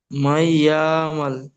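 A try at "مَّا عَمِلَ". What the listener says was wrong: ইয়া টান দিচ্ছেন, মাইয়া মাল বলছেন, ইয়া মাল, ইয়া মাল হবে না, মাইয়া। মাইয়া। মাইয়া আমাল।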